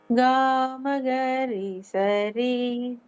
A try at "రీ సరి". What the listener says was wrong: నీ సరి కాదు కదా, రీ సరి రీ సరి.